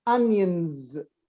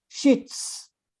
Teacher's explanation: In onions, it's pronounced z, onions. But in sheets, it's s, sheets.